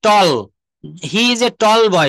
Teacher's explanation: টি এর উচ্চারণ ট না হয়ে ঠ এর মত উচ্চারণ করতে হয়।